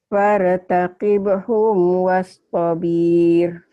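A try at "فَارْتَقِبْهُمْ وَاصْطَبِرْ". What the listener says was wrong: Pendek. Tobir. Pendek. Fartaqibhum wastabir. Wastabir. Pendek.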